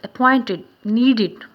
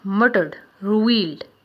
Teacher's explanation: the word appointed and needed is pronounced id, id. The ed in the murdered and the revealed is pronounced d.